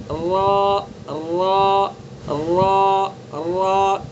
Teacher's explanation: را کا مخرج کیا ہے؟ زبان کا کنارہ اور کچھ زبان کی پشت۔ دیکھیے زبان کا کنارہ، یہ کنارہ ہے، یہ کنارہ، ٹھیک ہے، اور پشت جو ہے پچھلا حصہ، یہ پچھلا حصہ ہوتا ہے۔